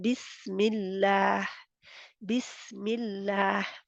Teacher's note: अल्लाह के नाम का लाम बारीक हो गया। क्यों? क्योंकि पहले ज़ेर आई है।